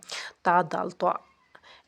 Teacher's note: حروف نطعیہ وہ حروف جو تالوں کے اگلے حصے سے ادا ہوتے ہیں